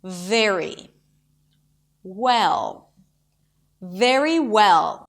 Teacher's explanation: For a V, the bottom lip touches the top teeth, creating this friction sound, and that is the V.